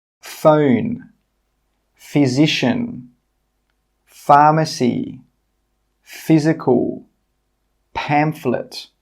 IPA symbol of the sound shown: f